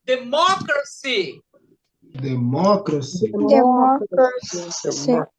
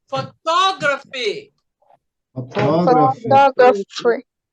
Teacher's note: Isso aqui eu vou dar exercícios específicos para vocês saberem que toda palavra terminada nesse finalzinho, ele vai ser proparoxítona, antepenúltima sílaba, a terceira de trás para frente